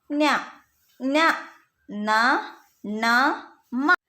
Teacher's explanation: ಮೂಗಿನ ಸಹಾಯದಿಂದ ಉಚ್ಚರಿಸಲ್ಪಡುವ ಅಕ್ಷರಗಳನ್ನು ಅನುನಾಸಿಕ ಎಂದು ಕರೆಯುತ್ತೇವೆ.